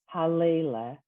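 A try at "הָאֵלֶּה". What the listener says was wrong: Eile. You added a lamed.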